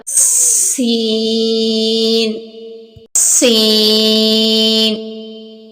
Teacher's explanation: سین کے اندر سیٹی کی آواز پیدا کرنی ہوگی